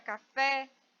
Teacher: Já na palavra café, eu sei qual é a sílaba mais forte, porque ela está acentuada e é a sílaba fé